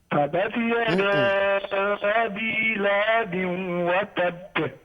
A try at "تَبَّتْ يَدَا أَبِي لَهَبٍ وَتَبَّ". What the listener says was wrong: You have removed the shadda. Tabbat. Tabbat, not tabati yada. It's tabbat.